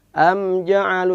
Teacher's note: Am harus jelas. Am ja'alu tanpa ada pantulan. Am ja'alu. Tapi walaupun jelas tetap perlu kita lentur.